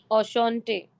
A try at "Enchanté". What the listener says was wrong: Enchanté you read. It is not enchanté. Enchanté nasal.